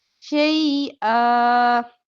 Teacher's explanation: दो जबर पर वक्फ करें तो एक जबर पढ़ते हैं अलिफ के साथ मिलाकर शई आ पढ़ेंगे